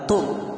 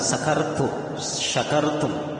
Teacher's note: kalau huruf ta itu kita melihat ta itu makhrajnya adalah ujung lidah ketemu dengan gusi bagian dalam. Sehingga kalau kita mengatakan tum, maka itu harus keluar dari makhrajnya yang benar, yaitu ujung lidah ketemu dengan gusi bagian dalam.